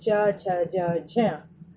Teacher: स्पर्शी संघर्षी इन व्यंजनों को बोलते समय मुंह के 2 अंग मिलने के पश्चात अलग हट जाते हैं और हवा घर्षण करती हुई बाहर निकलती है